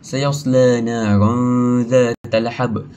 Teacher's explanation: qalqalah kubra ni patut dipantulkan dengan jelas saat berhenti